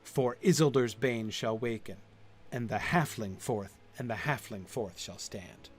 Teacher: both of the last 2 lines take the dominant rhythm of their line set, and they add the stress at the beginning, the extra syllable at the beginning